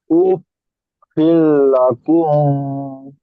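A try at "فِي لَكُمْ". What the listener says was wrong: গুন্না হবে না। উফ ফিল্লাকুম। বলেন।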